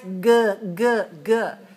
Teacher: we also focus on the velar sound but instead of voiceless we have voice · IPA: /g/